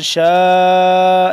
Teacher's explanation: شین الف مد زبر شاء لمبا کریں گے 4 سے 5 الف کے برابر لمبا کریں گے